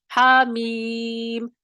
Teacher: میم کو کھینچتے ہیں، ہا کو نہیں کھینچیں گے کیونکہ یہاں پہ محل مد ہے، سبب مد نہیں ہے ہمارے پاس. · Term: حرفی مخفف